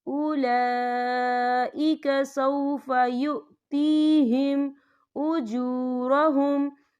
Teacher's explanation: یہ مد جو ہے مد متصل ہے، اس کی مقدار 4 حرکت کے برابر ہے، تو ہم اسے 4 حرکت کے برابر کھینچ کے پڑھیں گے.